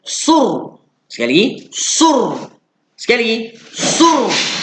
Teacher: Well, sod pada depan su jumpa dengan ra mati yang ada tanda. Ra mati ada tanda bunyi apa? Bunyi getaran lidah.